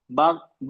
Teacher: दोनों होठ मिलेंगे तब बा ब लगेगा। ब दोनों होठ आपस में मिलेंगे